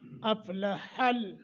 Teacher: اف یہاں قلقلہ نہ ہونے پائے، فا کو ساکن کر کے اور ہا کا مخرج صحیح ادا کرنا ہے